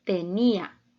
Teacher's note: está formada por tres sílabas y la sílaba tónica la tenemos en la en la penúltima sílaba